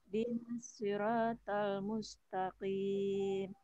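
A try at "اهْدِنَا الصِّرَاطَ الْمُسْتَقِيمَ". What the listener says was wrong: Ya, alhamdulillah. Nanti tadi itu ya, huruf ta-nya jangan menebal.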